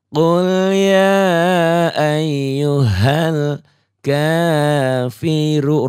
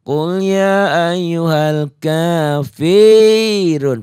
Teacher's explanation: Jadi jangan qul ya ayyuhal kafirun. Fi-nya jangan panjang, Fi-nya pendek, kosor. Tidak dipanjangkan, 1 ketukan.